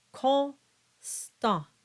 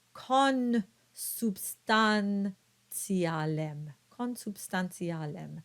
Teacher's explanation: So the combination of a vowel followed by an N or an M will not result in a nasalized sound.